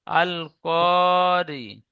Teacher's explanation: র নিচে জের এসেছে তাই র কে বারিক করে পড়বো